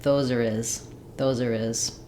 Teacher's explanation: then we drop the H of his so it sounds like those are is